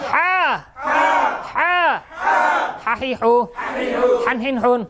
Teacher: কণ্ঠনালীর মধ্যখান হইতে, আওয়াজকে চাপাইয়া